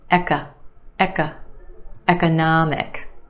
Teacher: we have a schwa in the second syllable